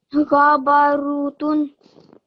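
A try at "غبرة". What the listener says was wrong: So this is fatha, remember? You read this as a dhamma. These all three are going to be fatha.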